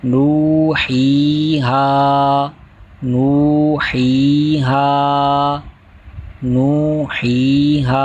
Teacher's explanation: کر پڑھیں گے، اوحینا اوحینا، اگلا حرف نوحیہا، اس کے اندر پہلے واو مدہ، پھر یا مدہ اور پھر الف مدہ، تینوں کو ایک الف یعنی 2 حرکات کے برابر کھینچ کر پڑھیں گے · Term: حرف مدہ